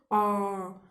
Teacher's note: विव्रत, इनके उच्चारण में मुख द्वार पूरा खुल जाता है। जैसे कि आप बोल कर देखो, आ, तो पूरा मुख द्वार खुल गया, तो ये हो गया विव्रत आ।